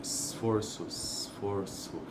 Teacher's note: o S sibilante ali, ele também se torna desvozeado